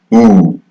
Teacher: And in the back part of the tongue, we have oo.